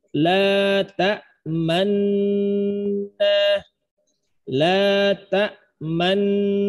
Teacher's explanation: Dengung ya. Jadi nunnya baca tasdid, dengungnya 2 harokat gunnah atau 3 harokat.